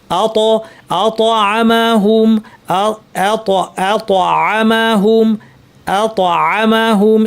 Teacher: তটা bounce করবে এবং ভারী হবে। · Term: তয়ের আওয়াজ